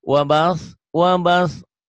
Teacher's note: sa-nya di ujung lidah ya nih kayak gini wabas wabas lidahnya kayak cadel ya.